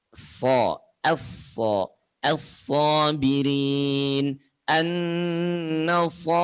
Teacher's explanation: Yang bedanya nanti di pangkal lidah saja. Kalau so, pangkal lidahnya terangkat sehingga suaranya menebal.